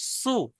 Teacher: জিভের আগা দাঁতের আগা থেকে উচ্চারণ হচ্ছে, ওইরকম ওখান থেকে সিন পেশ সু, সিন পেশ সু ওখান থেকে উচ্চারণ করতে হবে, জিভের মাঝখান দিকে যাওয়া যাবে না।